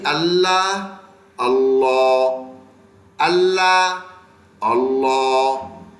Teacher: यह लाम लफ्ज अल्लाह का मोटा करके पढ़ना है मोटा करके यानी अल्लाह अल्लाह अल्लाह अल्लाह यह हम मोटा करना